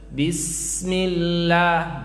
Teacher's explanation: setiap sin mati jangan buru-buru ya baca sin itu mengalir. Bismillah, jangan bismillah, bismillah, tetap ada sedikit alirannya.